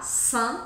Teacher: E aqui eu tenho que sorrir para pronunciar. Saint, esse som anasalado é um som com um sorriso